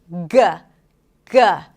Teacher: this is a voiced consonant, right? The air is stopped and released. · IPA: /g/